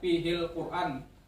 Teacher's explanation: di kalimat Quran itu ada alif lam qamariyah. Fihil Quran artinya alif lamnya terbaca.